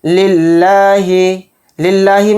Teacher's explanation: للہ میں جو لفظ اللہ کا لام ہے اس کو باریک پڑھنا ہے، موٹا نہیں پڑھنا ہے